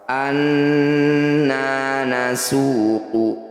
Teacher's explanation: Awalam yarau anna nasuqu, bunyi nun yang bertanda tasdid ini disebut bacaan gunnah musyaddadah. Cara bacanya harus dengung 2 harokat.